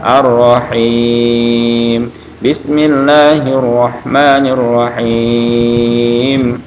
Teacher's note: ar-rahim 6 harokat boleh, ar-rahim 4 harokat atau 2 harokat, ar-rahim boleh, ya, tapi afdalnya dipanjangkan 6 harokat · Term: mad arid lisukun